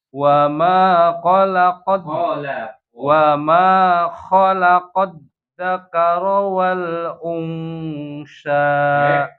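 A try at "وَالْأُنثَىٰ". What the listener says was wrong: Gimana tuh makronya? Ujung lidah keluar.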